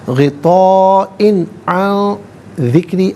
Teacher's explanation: فی غطاء، اور حمزہ کے نیچے دو زے کی تنوین، اس کے بعد عین حرف حلقی آ رہا ہے، تو یہاں تنوین کو بغیر غننے کے پڑھا جائے گا، بغیر اخفاء کے پڑھا جائے گا